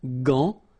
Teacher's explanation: But in that case, you've got this an, so it's nasal, gant, and then final T is not pronounced here.